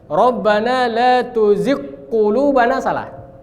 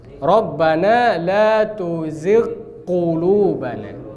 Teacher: Dia ghain satu, qaf satu. Maka jelaskan ghainnya dulu baru ke qaf.